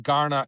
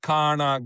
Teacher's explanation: G and K are what we call allophones of the same phoneme. So in other words, there is no distinction.